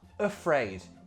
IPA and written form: əfreɪd (afraid)